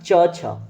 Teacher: छ ठीक है तो जब आप च छ बोलते हैं तो च जब आप बोलते हैं तो आपकी जीभ जाके तालू से टच होती है